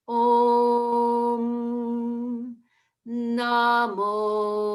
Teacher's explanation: And the na of Namo is the same note as Om. It's the same pitch.